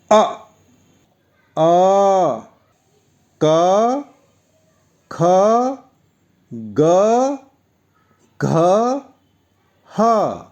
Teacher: आइए देखते हैं कंठ्य वर्ण कौन कौन से हैं, यानी जिनके उच्चारण के लिए हमारे गले या कंठ की ज़रूरत पड़ती है।